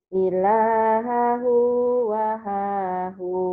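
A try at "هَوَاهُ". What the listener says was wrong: Kok wahahu Bu? Hawa. Hawa. Ha dulu. Yang panjangnya kan wa-nya doang. Ini kan gak ada panjangnya. Hawahu. Terbalik. Ilahahu hawahu. Ilahahu hawahu. Bukan wahahu ya. Ha dulu. Ilahahu hawahu. Kebalik.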